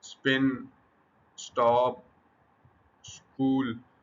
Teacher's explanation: In the words the preceding S reduces the aspiration. · सम प, ट और क are produced without a strong बस्ट of air. · In these words the preceding S reduces the aspiration. अब ये जो साउंड है ना, इसमें जो स साउंड आ रही है पहले पहले प्रीसीडिंग, ठीक है, प से पहले सा, ट से पहले सा, क से पहले सा जो साउंड है वो रिड्यूस करती है एस्पिरेशन को। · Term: अनएस्पिरेटेड साउंड्स